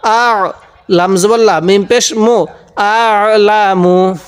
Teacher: অনেকেই আমরা এই আইনগুলোকে হামজা পড়ে থাকি, আমরা এই আইনগুলোকে হামজা পড়বো না, আইনটা পড়ার সময় একটু চাপ দিয়ে পড়বো।